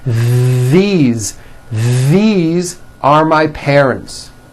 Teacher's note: That's the voiced TH. You should be able to feel a strong vibration in your throat and on your tongue.